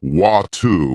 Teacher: In American English, people might say water with a D sound, while in British English it's often watu with a T sound